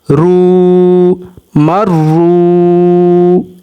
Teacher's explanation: रा जो है वो वाव से मिल रहा है और इसको थोड़ा सा वाव को लंबा भी करेंगे 1 सेकंड तक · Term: हरूफ मद्दा